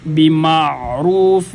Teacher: عین کو انتہائی نرمی کے ساتھ پڑھا جائے گا، جھٹکا بھی نہیں دیا جائے گا